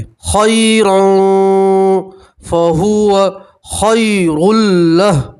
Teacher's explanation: और यहाँ तनवीन का इक्फा है, तनवीन की आवाज़ को नाक में छुपाएंगे और 1 अलिफ के बराबर गुन्ना करेंगे